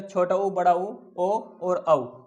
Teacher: इनमें जो सबसे पहला है छोटा ऊ, बड़ा ऊ, पहले नंबर पे छोटा ऊ, फिर बड़ा ऊ, उसके नंबर पे इसके बाद है ओ, फिर इसके बाद है और औ। ये 4 स्वर हैं जिन्हें बोलते समय हमारे ओठ वृत्त के आकार में खुलते हैं। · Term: वृत्ताकार